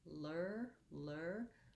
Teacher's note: lifting the tongue in the front initially and then pulling it back into the er position